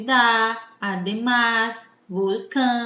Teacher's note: todas essas palavras a última sílaba mais forte portanto elas são palavras agudas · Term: palavra aguda